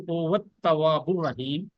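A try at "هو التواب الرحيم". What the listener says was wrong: تواب الرحیم. نہیں تے کو واو کے ساتھ شد ملا ہے نا.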